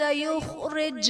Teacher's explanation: جیم حرف قلقلہ ساکن ہے تو یہاں پر قلقلہ خوب ظاہر کریں گے